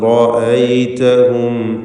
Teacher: റാഇനെ തഫ്ഖീം ചെയ്യുക, മറ്റക്ഷരങ്ങൾക്ക് തഫ്ഖീം നൽകുകയില്ല